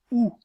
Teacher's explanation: La voyelle OU est une voyelle postérieure parce que la langue est en position reculée